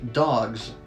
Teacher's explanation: in dogs since G is voiced s also becomes voiced becoming more of a z